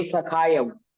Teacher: क में क्या है, आ है, दीर्घ आ, सखायव सखयो नहीं